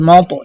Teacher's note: খাজুতা হাত্তা এখানে খাজুল একম টানতে হবে মিম ত জবর মাত এখানে কলকলা করবেন এবং তটা দ্বিতীয়বার আবার ছোট করে উচ্চারণ হবে